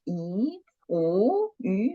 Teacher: The first tone should be higher and flat, okay? So don't raise up.